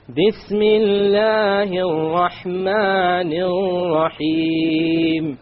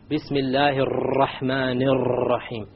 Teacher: Notice the 2 R's with the shadda on them in the Rahman. I didn't roll them. Remember we talked about we're not allowed to roll them.